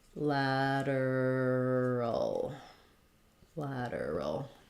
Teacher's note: for lateral we have a flap here we have first syllable stress